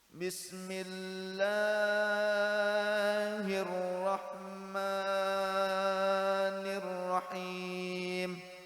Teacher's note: Mad tabi'i jadi 4 harokat, 5 harokat.